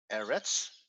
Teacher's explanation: when we have a word like eretz the stress is on the first syllable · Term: stressed syllable